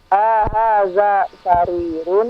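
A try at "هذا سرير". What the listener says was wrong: Ingat, A-nya pendek. Jangan dipanjangkan.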